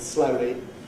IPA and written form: ˈslʌʊli (slowly)